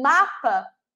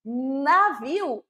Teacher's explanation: quando eu falo mapa meus lábios se tocaram quando eu falo navio não se tocaram · os dois lábios se tocam se fecham para formar esse som do m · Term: consoante bilabial